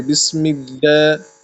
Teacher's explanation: لام کو باریک پڑھنا ہے، ٹھیک ہے، لام کو وہ منہ بھر کے نہیں پڑھنا ہے۔